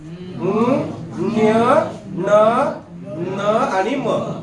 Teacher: नासिकेतून त्यांचा उच्चार होतो म्हणून त्याला अनुनासिक म्हणायचं